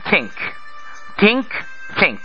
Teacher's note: থিংক আমরা যখন থিংক বলছি তখন বাংলা মতে থ উচ্চারণ করছি এই থ উচ্চারণ করার সময় আমাদের জিহ্বার আগা থাকে উপরের পাটির দাঁতের গোড়ায়